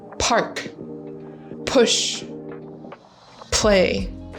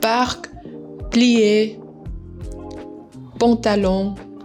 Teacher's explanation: The P in French, much softer, not as much air out at all. · In French, you have a couple of these unvoiced consonants, but they're much softer than in English. Softer in the sense that in English, you have to push a lot of air out. In French, not so much.